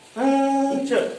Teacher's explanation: तो हम अनुस्वार बोल रहे हैं तो हमारा अनुस्वार हमारी जीभ तालव्य हो जाती है, पंच। तो यहाँ जीभ हमारी तालु पर पहुंच रही है, इसीलिए यहाँ पर यह अनुस्वार का प्रयोग होता है